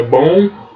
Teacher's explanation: não tem esse som de U no final